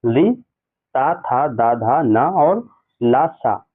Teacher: उच्चारण में जिह्वा का अग्रभाग यानी आगे का भाग दांतों से स्पर्श हो, वो क्या होते हैं, दंत स्पर्श करता है, उसे हम कहते हैं दंत वर्ण कहलाते हैं।